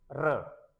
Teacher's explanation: जब र का उच्चारण करते हैं तो जीवा मुंह में लुढ़कती है। र इसलिए इसका नाम लुंठित वर्ण भी है।